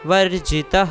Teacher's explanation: जो त के बाद विसर्ग है उसका उच्चारण हमें पूर्णतः करना है